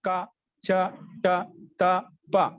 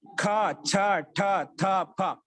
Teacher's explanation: రెండవ అక్షరాన్ని పలకడం కోసము శక్తి ఎక్కువ కలుగుతుంది కాబట్టి అందుకే మహాప్రాణం అంటాం